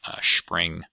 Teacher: the S being palatalized to be more like a sh in sta, spra, scra, and stra clusters.